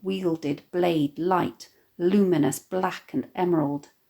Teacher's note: the consonance of the liquid /l/ and plosive /b/ and /d/ sounds